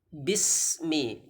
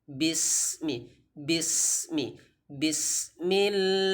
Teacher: Jadi sin itu ada hamznya, maka harus ada sedikit suara yang mengikuti. Bis, tidak boleh kita katakan bis, tidak boleh.